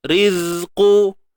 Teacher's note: Matikan zai terus. Jangan panjang.